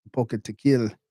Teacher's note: stress on the second to last syllable